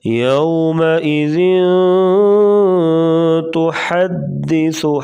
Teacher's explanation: ذن پہ اخفا ہو رہا ہے، جو پیچھے ہم نے پڑھا ہے، اخفا یعنی ناک میں آواز چھپا کر غنہ، نون ساکن یا نون تنوین کے بعد، ادھر نون ساکن تھا تو ادھر تنوین ہے، 2 زبر 2 زیر 2 پیش کو تنوین کہتے ہیں۔ تنوین کے بعد حروف اخفا تا آ گیا تو یہاں پر غنہ کریں گے، یعنی ناک میں آواز چھپا کر غنہ کریں گے۔ یومئذ تحدث، ہا کی آواز واضح کریں گے، بعض لوگ ہا کو ہا پڑھ دیتے ہیں تو حدث، تو ایسے پڑھنا غلط ہے۔